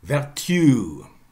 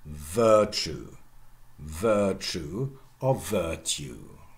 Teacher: And then Yod-Coalescence sets in, and at the same time the accent shifts to the first syllable. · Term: Primary stress